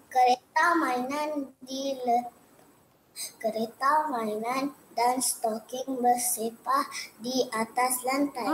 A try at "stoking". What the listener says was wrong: Bukan stokin. S-T-O, K-I-N-G, king. Ada G dekat belakang anak-anak. Jangan lupa ejaan stoking tu. Bukan stoking. Dia sebut stokin. Ya, sebenarnya ada G di belakang anak-anak. Ejaan stoking.